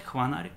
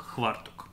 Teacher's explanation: То есть как только мы видим букву «ф», это 100% гарантирует нам, что слово не славянского происхождения. Так вот, на месте звука «ф» в части южно-русских говоров, или, например, в брянском диалекте, используется звук «хв»